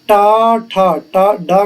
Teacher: टा वर्ग के वर्ण हैं मूर्धन्य से